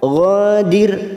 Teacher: ra sukun yang didahului kasrah kita baca tarkik tipis